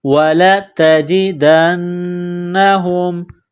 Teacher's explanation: نون مشدد ہے، غنہ کریں گے، آواز ناک میں چھپائیں گے